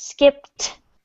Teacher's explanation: So make sure that you pronounce that final t sound in the last syllable.